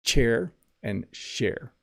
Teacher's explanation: With share, my tongue is lower. It's not touching the roof of my mouth.